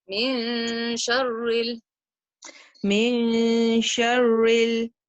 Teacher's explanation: And we put the Noon in our nose. Don't let your tongue say min. Don't let it go all the way to reciting the Noon. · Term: إخفاء